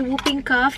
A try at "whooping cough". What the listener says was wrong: Hooping. Hooping cough. I think the W silent, babe. It's hooping cough. Not whooping, hooping.